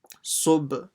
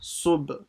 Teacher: Then the sad which will join to the ba. Sub, again with an echoing sound on the ba